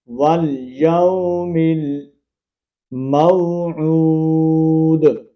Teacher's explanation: جب واو سے پہلے زبر ہو، جب یا سے پہلے زبر، جس طرح یہ دیکھیں واو سے پہلے زبر ہے اور یا سے پہلے بھی زبر آئے گی تو وہ لین ہوگا، اس کو ہم کھینچ کر نہیں پڑھیں گے، حروف مدہ کی طرح لمبا نہیں کریں گے · واو مدہ ہے، تو اس کو ہم ایک الف کی مقدار کے اندر کھینچیں گے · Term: حروف لین